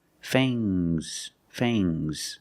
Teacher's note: Use a long A plus the nasal sound and a soft G.